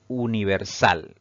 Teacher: la mayor fuerza de voz o la mayor intensidad al pronunciar esta palabra recae en la última sílaba, contando siempre de derecha a izquierda. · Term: palabra aguda